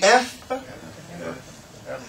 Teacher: top teeth hit the bottom lip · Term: labials